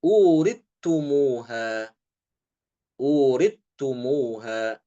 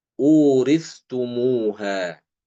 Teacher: Sa-nya hilang. Masuk ke dalam ta, ya, huruf ta. Adapun Imam Ibnu Zakwan sama seperti Hafiz ya.